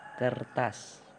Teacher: Selanjutnya ada retrofleksi yaitu penambahan bunyi sertaan yang dihasilkan dengan cara ujung lidah ditarik ke belakang segera atau ketika bunyi utama diucapkan sehingga terdengar bunyi sertaan R. Seperti dalam contoh kertas.